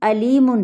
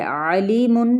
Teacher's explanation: علیم یعنی عین کا وسط حلق سے ادا کرنا